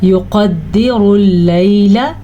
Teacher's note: لام کے اوپر جو زبر ہے اس کو زیادہ لمبا نہیں کرنا. یقدر اللیل، اتنا سا.